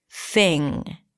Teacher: You know that pronunciation is my thing, and notice how I said thing without popping my g sound at the end, because it ends with an ng. So you don't really release the G here.